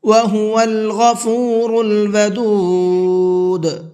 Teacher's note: وَهُوَ الْغَفُورُ الْوَدُودُ، غفور غین کو بھی اور را کو بھی دونوں کو پر کر کے پڑھنا ہے